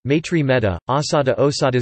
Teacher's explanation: Sanskrit ai and au always monophthongize to Pali e and o, respectively